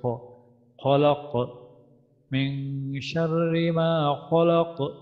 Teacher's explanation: খ খ আমাদের হলক থেকে উচ্চারিত হবে, হলকের শেষ থেকে উচ্চারিত হচ্ছে খ